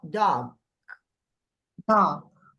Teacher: Tem o G, mas o G não sai. · O G não é ele não é voiced. Ele é voiceless